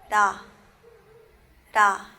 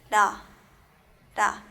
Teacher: riul no suena como una R ni como una L, sino que un término medio